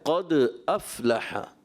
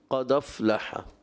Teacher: حمزہ یہاں تحقیق سے واضح کریں گے، خوب ظاہر کر کے پڑھیں گے